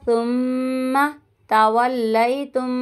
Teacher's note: میم ساکن کے بعد میم مشدد آ رہا ہے تو یہاں پہ گنہ کریں گے